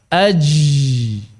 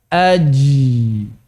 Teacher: jim itu baina linfijar wal ihtikak. Di antara infijar dan ihtikak.